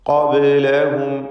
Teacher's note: ബാഇൻ്റെ സുകൂൻ ഖൽഖല സുഗ്റ നൽകി ശബ്ദം ഹറക്കത്ത് പോലെ ചലിപ്പിച്ച് ഉച്ചരിക്കുക.